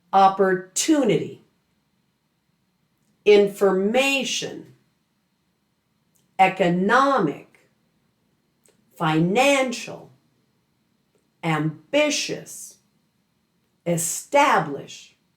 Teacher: the stress on each of these words will fall on the syllable just before the suffix ending. This means you're listening for the greatest emphasis on the vowel sound that comes before the suffix ending.